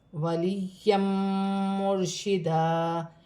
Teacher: یا مشدد ہے، دو زبر کی تنوین بھی ہے، دو زبر کی تنوین کے بعد میم مشدد آ رہی ہے، تنوین میں غنہ بھی کیا جائے گا، ملا کر بھی پڑھا جائے گا